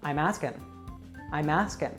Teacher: Connect I am asking and drop the G from asking.